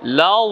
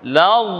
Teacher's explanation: এই তাসদিদকে কেমন হবে, লামের আকার এসে ধরছে দদকে, উচ্চারণ হবে লাউ, জিহ্বার গোড়ার দুই সাইড উপরের মাড়ির সাথে লাগাতে হবে, লাগিয়ে উচ্চারণ করতে হবে